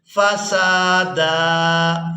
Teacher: سین کو الف مدہ کی وجہ سے، اس کے بعد دال کو بھی الف مدہ کی وجہ سے کھینچ کر ادا کریں گے،